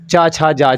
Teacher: ऐसे व्यंजन जिनको बोलने में कहीं ना कहीं हमें तालु का प्रयोग करना पड़ता है, वो आपके तालव्य व्यंजन के अंतर्गत आते हैं।